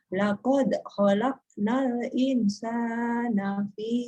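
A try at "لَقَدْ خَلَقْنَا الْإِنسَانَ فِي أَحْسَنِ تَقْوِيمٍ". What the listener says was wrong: Insannya mendengung, Bu. Insan mendengung. Insan. Jangan cepat-cepat. Ingnya dulu. Ingnya dulu. Laqad khalaqnal jangan cepat-cepat innya.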